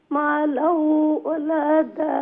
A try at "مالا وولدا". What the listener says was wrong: مالا وولدا না মা লাউ তো ফয়লা ওয়াও উচ্চারণ হইল না এরপরে ওয়াও জবর ওয়া এরপরে আরেকটা আছে ওয়াও জবর ওয়া লাম জবরুল্লাহ মা লাউ ওয়া ওয়ালাদা হ্যাঁ